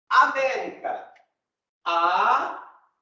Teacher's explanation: A proparoxítona, quando a sílaba tônica é a antepenúltima.